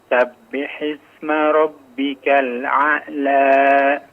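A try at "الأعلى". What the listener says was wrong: afwan, diperjelas hamzahnya ya. A'la, baru masuk ain.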